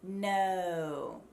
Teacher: in a US American O, no, the tongue actually pulls back into the mouth. No. So if you make that O sound, if you feel it, your tongue is being pulled back into your mouth.